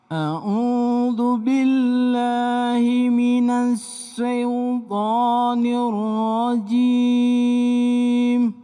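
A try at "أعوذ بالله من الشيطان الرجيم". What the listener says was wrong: Ya, tinggal latihan sedikit.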